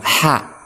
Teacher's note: Untuk ha ini dia berada di tengah-tengah tenggorokan, ha. Kemudian dia dilafadzkannya bersih.